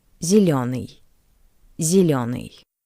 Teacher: The first ye is unstressed. That's why it sounds closer to the soft e.